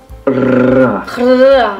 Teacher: vous allez faire passer un souffle d'air qui va faire vibrer la langue contre les dents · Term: R roulé